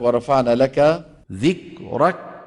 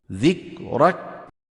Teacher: ترك همسها وخاصة عند سكونها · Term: الكاف الصماء